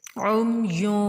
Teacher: ناک میں آواز چھپتی ہوئی آتی ہے، اسی کو اخفا کہتے ہیں